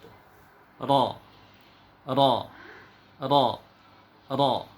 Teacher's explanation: dia bukanlah memang ujung lidah bagian ini tetapi dia bagian sininya punggung ujung lidah digetarkan ke gusi atas gusi atas bagian belakang ya gusi di paling ujung kemudian Tengah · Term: getar huruf ro